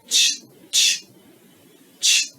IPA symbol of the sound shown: tʃ